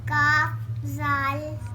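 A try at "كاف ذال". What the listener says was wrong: ذال کی زبان کی نوک باہر نکلے گی، کاف ذال،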